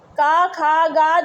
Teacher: क ख ग और घ ये जो है कंठ के उच्चारण स्थान माने जाते हैं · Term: कंठ ध्वनियां